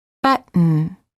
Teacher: For example, we don't say button or button, we say button. Hold the T as in but, and then add an N without releasing the tongue from the gum ridge. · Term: held T